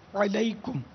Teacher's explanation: تو السلام علیکم عین حلق سے نکالنا ہوگا